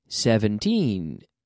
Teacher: 17 with the stress on the second half